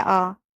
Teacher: विवृत जो है उसमें तुम्हारा पूरा मुंह खुल रहा है